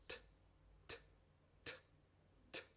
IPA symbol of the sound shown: t